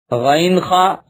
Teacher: عین ہا حلق کے بیچ والے حصے سے ادا ہوتے ہیں۔ غین خا حلق کے اوپر والے حصے سے ادا ہوتے ہیں